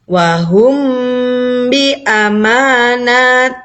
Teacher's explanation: cara membacanya mimnya disamarkan masuk dalam huruf ba dan harus disertai dengan berdengung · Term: Ikhfa Syafawi